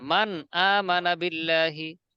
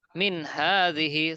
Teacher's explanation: নুন সাকিনের পর 8 হরফের এক হরফ হা আছে, মিন হাযিহি স্পষ্ট পড়তে হচ্ছে